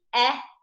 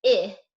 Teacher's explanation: the short E and the short I, which would be eh and I, are very, very close in this American English dialect. They're pretty close in other English dialects as well, and are often a big sticking point for many of our students.